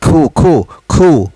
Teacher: kalau kita bunyi itu sampai ke kerongkong, dia lebih hampir kepada makhraj huruf qaf